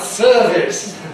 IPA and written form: ˈsɜːvɪs (service)